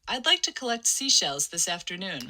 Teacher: her f0 kind of goes to its maximum peak on the word like and i don't know that's maybe like 350 hertz or something